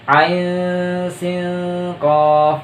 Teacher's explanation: Jadi pada saat pengucapan ain bertemu dengan sin atau bertemu dengan huruf sa, itu akan dibaca samar. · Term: ikhfa hakiki